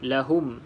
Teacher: untuk m ada tanda mati kita kena rapatkan bibir atas bibir bawah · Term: izhar syafawi